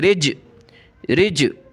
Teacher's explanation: یہ جیم حروف قلقلہ میں سے پڑھتے وقت ہم نے اس کو پڑھنا ہے کہ جیسے منہ کے اندر گھوم کر واپس آئے